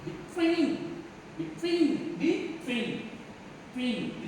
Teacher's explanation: Same disyllabic prepositions. When the word is preposition, we have to stress on the second syllable